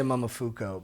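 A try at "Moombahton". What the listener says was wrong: There's not even an F in it. Moomba tone. Moombatone.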